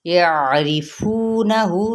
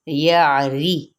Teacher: را یہاں پہ باریک پڑھی جائے گی